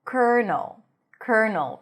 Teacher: So an N sound, a reduced vowel, and an L. · Primary stress is on the first syllable. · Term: dark L